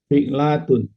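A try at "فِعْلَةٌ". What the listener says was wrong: Enggak panjang, Pak. Fi'latun gitu aja. Iya, enggak ada yang panjang ya.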